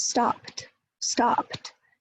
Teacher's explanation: You go from p to t. So you go from a bilabial plosive to an alveolar dental, alveolar, t, t, t, stopped, stopped.